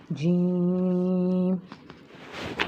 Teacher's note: زبان کا درمیان اور تالو کے درمیان سے یہ حرف ادا ہوتا ہے. pronounced from the middle part of the tongue touching the middle part of the palate. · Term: حروف شجریہ